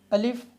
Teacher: अलिफ को पढ़ते हुए आवाज़ में झटका मार देते हैं